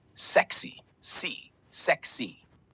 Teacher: sexy is pronounced with a clear short e sound in the first syllable